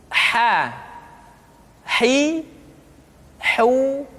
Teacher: dikeluarkan dari tengah-tengah tenggorokan